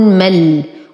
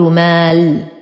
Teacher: طبعا همزة الوصل ساقطة في درج الكلام فلا تنطق. تلاقى ساكنين أولهما حرف مد فيسقط حرف المد، وننتقل من فتحة الميم إلى إسكان اللام، فنقول ميم فتحة لام سكون مل، ولا أقول مال، وهذا خطأ.